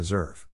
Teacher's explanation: In this case, the accent is in the second syllable, corresponding to deserve.